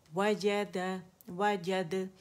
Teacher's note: कलकला करेंगे इसमें बारीक आखिर में, और जबड़ा खुलेगा, याद रखिएगा एक काउंट के लिए, ठीक है।